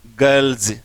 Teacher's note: अब जनरली हम इसको बोलते हैं गर्ल्स से बोलते हैं, लेकिन से नहीं, इसको जे बोलना है